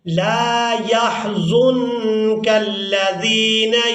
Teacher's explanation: پہلے لام کو بغیر جھٹکے اور بغیر کھینچے ادا کریں گے، اور دوسرے لام کو ہم نے الف مدہ کی وجہ سے کھینچ کر ادا کرنا ہے۔